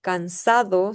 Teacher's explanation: Se debilita la d intervocálica